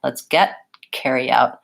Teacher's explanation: So there's no release of air after the T. And I also use a stop T on this one. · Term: unreleased stop